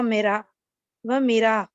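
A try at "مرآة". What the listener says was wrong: इसको थोड़ा सा लंबा करें ना, ये मद्दा है यहाँ। मिरआ।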